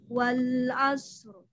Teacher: Rohnya ada tawasud, ada mengalir sedang, ya, tambahannya takrir